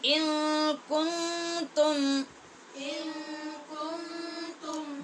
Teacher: دونوں جگہ پہ نون پہ اخفا ہے، اور آگے جو میم ہے تم یہاں پہ اظہار ہے